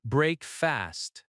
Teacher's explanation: Breakfast has stress on break.